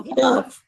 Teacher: You need a link, changing the T to a D because it's a flap D. It's in the middle of two vowels.